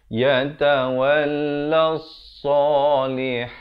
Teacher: Tekankan, kemudian lam baris atas naik di atas sod. Di sini alif lam syamsiah. Lamnya tidak dibunyikan.